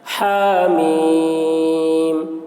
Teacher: کھڑا زبر کو 1 الف کے برابر کھینچ کر پڑھیں گے۔ میم، میم کے تلفظ میں یا حرف مد ہے، اس کے بعد میم ہے جس پر سکون ہے، تو حرف مد کے بعد والے حرف پر سکون ہے اور حروف مقطعات میں سے ہے، اس لیے مد لازم حرف مخفف ہوا۔